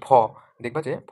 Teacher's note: ফ উচ্চারণের জন্য বায়ু বেশি নির্গত হচ্ছে মুখ থেকে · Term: মহাপ্রাণ